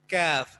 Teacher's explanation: آگے منہ کی طرف جب زبان اوپر تالو سے لگے گی تو کاف ادا ہوتا ہے